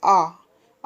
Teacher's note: दोनों जो और है वह कैसे होंगे खुले हुए होंगे इसे आ हम बोलते हैं तो आ पूरा खुला हुआ रहता है